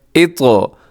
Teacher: موٹا بھی ہے، قلقلہ بھی آپ نے کرنا ہے طا کو